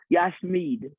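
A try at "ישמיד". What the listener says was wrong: Yes, yes, yes. That was perfect. You just don't trust yourself.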